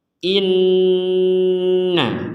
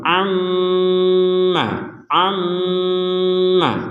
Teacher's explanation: mim bertasdid kita baca dengan dengung sama seperti Nun bertasdid